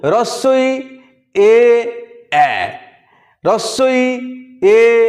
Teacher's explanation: যখন ঠোঁটটা সবথেকে বেশি প্রসারিত হয় তাকে বলা হয় প্রসারিত স্বরধ্বনি